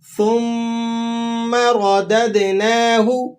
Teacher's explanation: ثم میم مشدد ہے، آپ نے غنہ بھی کرنا ہے اور ذرا مضبوطی کے ساتھ بھی پڑھنا ہے۔ را کے اوپر حرکت ہے، آپ نے اس کو موٹا کر کے پڑھنا ہے۔